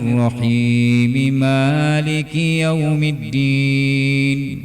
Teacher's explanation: Disambung bacaannya tanpa ada waqaf, tetapi kemudian ucapannya, nutqannya disebut secara terperinci, masing-masing mim disebut.